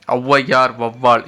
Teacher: இரண்டு மாத்திரை அளவிலிருந்து ஒன்ரை மாத்திரை அளவா ஒளிக்கும் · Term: அவகார குறுக்கம்